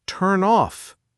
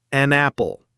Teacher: The N sound attaches itself to the O. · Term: consonant to vowel